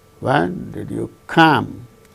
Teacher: Here, come is the word that gains the falling tone.